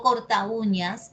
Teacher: la cerrada u está sonando más que la abierta a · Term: hiato acentuado